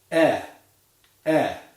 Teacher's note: E is a lax vowel, meaning there is no or very little tension in the jaw muscles when we produce it. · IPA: /ɛ/